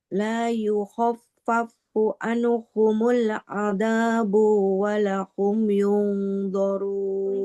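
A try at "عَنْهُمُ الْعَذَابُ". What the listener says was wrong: Nah, anhumul azabu. Ba-nya nggak boleh panjang. Anhumul azabu wa la hum yunzarun.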